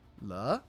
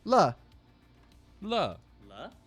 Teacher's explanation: tone uh number two which is going to sound kind of like uh when you would ask a question. So uh it is a it is a rising tone.